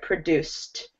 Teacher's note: I'll just paste the link again. Where your ending should not sound like id. It should sound like a T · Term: ED endings